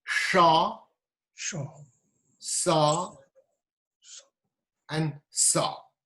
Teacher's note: we have 3 sibilant consonants, also known as hissing consonants.